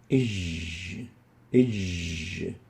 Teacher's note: Ij is articulating at the wide area of the mouth between the tongue and the palate, the hard palate. Ij. And for this reason, we classify the jim as a lingual palatal letter.